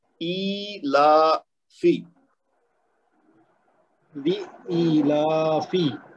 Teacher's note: یہ آپ کا پہلا جو لام ہے نا وہ بھی لمبا ہو رہا ہے، اس کو نہیں لمبا کرنا